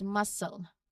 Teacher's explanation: You don't hear a K sound for that C. It's just the S sound, hissing sound.